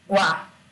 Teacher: Então primeiramente a gente tem a semivogal o que tem o som mais fraco e depois a vogal então o som dessa sílaba está crescendo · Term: ditongo crescente